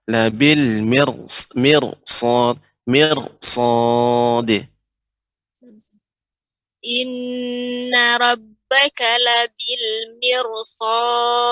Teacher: ini ra-nya tebal karena setelahnya adalah huruf sad.